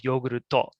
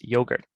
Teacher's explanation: yogurt becomes yoguruto, and they're adding the to on the end of it